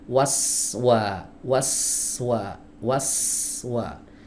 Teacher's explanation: huruf sin punya sifat sofir teman-teman, jadi tajamnya itu terdengar jelas gitu, desis tapi menajam, waswa, waswa, waswa, ya, hiddatus saut, ya, tajam suaranya, itu yang disebut dengan sofir, ya, waswa.